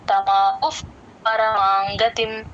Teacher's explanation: ఇత్యుక్తః తమాహుఫ్ పరమాంగతిం తమాహుఫ్ ఆ హు పక్కన విసరిగా ఎఫ్ లాగా చెప్తాము పా ముందు ఎప్పుడు విసర్గ వచ్చినా సరే ఎఫ్ లాగే చెప్పాలి.